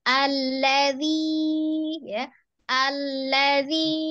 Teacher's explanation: huruf lamnya itu dia tengah-tengah, tidak sidda, tidak rogwah